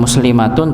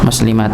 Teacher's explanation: Jadi ketika dia waqaf berhenti maka otomatis menjadi sukun. Bukan muslimatun tapi muslimat.